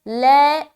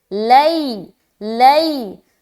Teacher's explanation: لئی، معروف بناتے ہوئے، لے نہیں پڑھنا